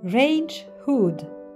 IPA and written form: ˈreɪndʒ ˌhʊd (range hood)